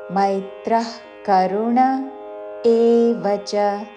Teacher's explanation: విసర్గ తర్వాత కాతో పదము మొదలవుతున్నది కాబట్టి నాభి నుండి శ్వాస వదిలి చివరిన ఖ లాగా ఉచ్చారణ. మైత్రః కరుణ ఏవచ ఏకలవ్యలో పలికే ఏ యాతో ఏ కాదు ఏవచ వచ హ్రస్వములు.